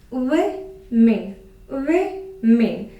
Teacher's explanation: So the stress is on the first syllable.